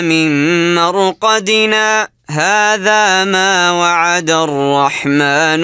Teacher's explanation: تسكت سكته لطيفه بزمن عاده لا يتنفس فيه